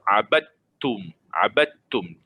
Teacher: Memang kita masukkan, kita tak bunyikan dal itu. Kita masukkan terus pada ta. Ta yang syaddah atau sabtu itu, terus abadtum. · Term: idgham mutajanisain